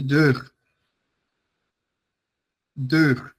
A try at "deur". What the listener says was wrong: Deur. No, deur. Yeah, make it longer. Make the vowels longer.